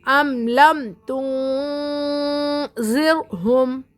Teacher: نون کی آواز کو ناک میں چھپا کر پڑھیں گے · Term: اخفا